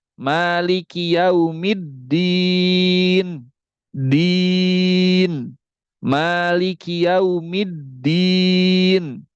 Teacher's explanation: Nah, ini maksudnya adalah huruf dal itu mirip kepada huruf ta. Jadi ada beberapa orang yang membaca Malik Yaumiddin itu dal pertamanya dibaca pakai ta.